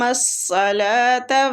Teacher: صاد بھی مستعلیہ رخاوے کے ساتھ پڑھیں گے ، مستعلیہ بھی پڑھیں گے، لام کو کھینچیں گے کھڑی زبر